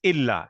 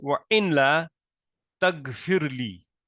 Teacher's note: You assimilate the noon with the lam, and you give a shadda to it. So it becomes wa in la tagfirli. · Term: idgham